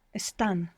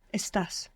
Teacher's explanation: all of the other forms are regular. We build them how we would expect to, with the exception that the accent will be on the last syllable, and it's the only verb in the entire present tense that has this characteristic.